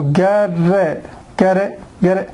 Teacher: the T here is flap T because it's it between two vowel sounds